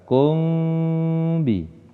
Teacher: mim sukun bertemu dengan huruf ba, bacaan ikhfa syafawi. Cara membacanya disamarkan dan disertai dengan dengung